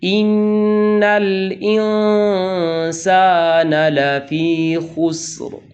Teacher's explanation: الف مدہ کے بعد نون غنہ نہیں ہے بلکہ صرف الف مدہ ہے اور اس کی آواز جوف دہن میں ختم ہو جانی چاہیے